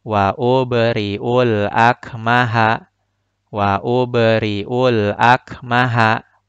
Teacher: huruf ba-nya harus dipantulkan dengan skala kecil atau sughra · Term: qalqalah sughra